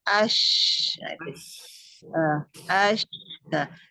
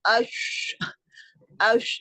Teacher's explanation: ada suara tapasnya itu lebih ini lebih memancar kan terpencar ada angin yang dipancarkan dari tengah lidah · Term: tapasyi